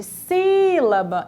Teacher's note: A antepenúltima sílaba da palavra, ou a terceira de trás para frente, é a sílaba mais forte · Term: proparoxítonas